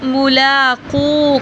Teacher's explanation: مولا انہم، میم پہ غنہ کریں گے، میم کے اوپر شد ہے. اور ملاقو، قاف کو تھوڑا سا لمبا کریں گے کیونکہ پیش کے بعد واو ہے